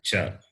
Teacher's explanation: the class beginning with the letter Cha, and they are pronounced from the palate. Therefore, they are called palatals. · The tongue touches the middle roof of the mouth, the palate.